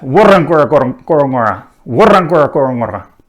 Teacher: we have main stress in the beginning, and then secondary stress on the third, the fifth, and the seventh syllable